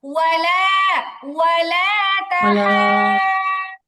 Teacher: ওয়ালা লামের মধ্যে টান আছে